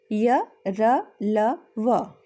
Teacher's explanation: इनका उच्चारण स्वरों और व्यंजनों के बीच के स्थान से होता है, अतः इन्हें अंतस्थ व्यंजन कहा जाता है।